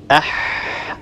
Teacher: لاحظوا كيف أن النفس يتدفق، يعني إذا وضعنا أيدينا أمام أفواهنا سنلاحظ هواء يخرج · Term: حرف مهموس